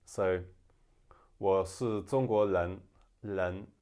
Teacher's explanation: instead of being R, in some parts of China or Taiwan, it can become L